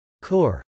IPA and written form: kˈɔːr (corps)